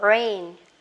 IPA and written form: reɪn (rain)